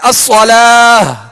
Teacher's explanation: اور تیسرا طریقہ یہ ہے کہ اگر آخری حرف گول تا ہے تو گول تا کو ہائے ساکنہ سے بدل کر وقف کریں گے، جیسے الصلاۃ، اب یہاں گول تا ہے، اب الصلاۃ پر ہم رکنا چاہ رہے ہیں تو اب اس کو الصلاۃ یوں کہہ کر نہیں، یا الصلاۃ تا پڑھ کے نہیں، بلکہ الصلاۃ آخر میں ہا کی آواز نکالیں گے، ہائے ساکنہ کی آواز نکالیں گے، یہ گول تا کے لیے۔